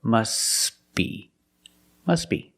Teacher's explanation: The T is silent because it's between consonants when you link the words. Must be. Link the sounds s with a b.